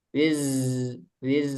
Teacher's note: Kalau zai itu kan maksudnya udaranya tertahan, itu nggak ada hembusan udara gitu ya. Wizrok kalau kita rasakan kan masih ada udaranya ini.